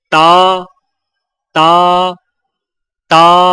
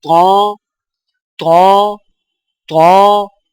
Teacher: طا موٹی آواز، ادائیگی کے وقت زبان کی نوک کو سامنے والے اوپر کے دو دانتوں کی جڑ سے لگائیں اور زبان کے پچھلے حصے کو تالو کی طرف بلند کریں